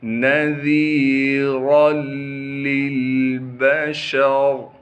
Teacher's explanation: یا مدہ ہونے کی وجہ سے ذال کو ایک الف کی مقدار کھینچنا ہے، را کو موٹا کر کے پڑھیں گے اور را کو آگے لام مشدد سے ملا دیں گے